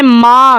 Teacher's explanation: میم کے اوپر مد ہے، 3 4 الف تک اس کو لمبا کیا جائے گا